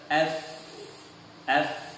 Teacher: huruf fa tersebut kalau kita pegang pada pita suara kita tidak akan rasa getaran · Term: al-hams